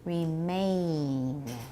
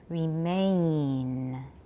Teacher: You're going too fast, and the N is coming too soon. The N is very, very short. Make the A part really long. Remain. Not me at the beginning.